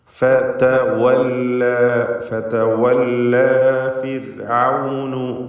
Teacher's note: റാഇന് തർക്കീഖ് കൊടുക്കണം, നേർപ്പിച്ചുച്ചരിക്കണം. റാഇന് സുക്കൂനും തൊട്ടുമ്പിൽ സ്ഥിരപ്പെട്ട കസ്റുമുണ്ട് എന്നതാണ് കാരണം · വാവ് 2 ചുണ്ടുകൾക്കിടയിൽ നിന്ന് തന്നെ ചുണ്ടുകളെ വൃത്താകൃതിയിലാക്കി ഉച്ചരിക്കണം എന്നത് പ്രത്യേകം ശ്രദ്ധിക്കുക.